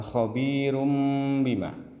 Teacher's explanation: tidak boleh terlalu cepat harus dengung dua ketukan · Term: dengung 2 ketukan